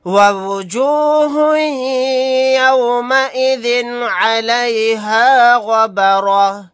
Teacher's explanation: बा साकिन है, यहाँ पर कलकला करेंगे.